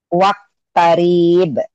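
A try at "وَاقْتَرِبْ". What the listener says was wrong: Kenapa panjang? kenapa panjang? Wak, wak, ini ada e-nya karena ini huruf qalqalah. Wak tarib, wak tarib gitu.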